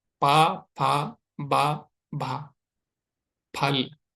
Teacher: देखो, ये होंठ दांत को टच कर रहा है, फल, फल, फल, फल। फल सही नहीं है, दोनों होंठ टच होने चाहिए